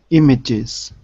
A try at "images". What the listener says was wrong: That's it.